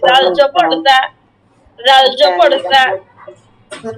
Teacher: জিবার আগাটা একদম উপরে দাঁতের সাথে হালকা করে লাগাতে হবে।